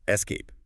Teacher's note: It is a two-syllable word, and I want the listener to place the emphasis or the stress heavily on the second syllable.